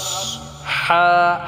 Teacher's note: হাটাকে আমরা গলায় চাপ দিয়ে উচ্চারণ করব।